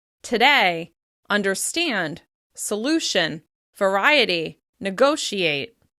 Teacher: The vowel sounds are reduced; they're very relaxed and almost indistinct.